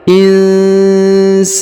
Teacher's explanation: huruf sa dibaca panjang 2 harokat karena di depannya terdapat alif